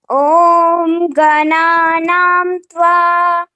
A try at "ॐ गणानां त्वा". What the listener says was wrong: Udatta you didn't say. Om Gananaan Tva.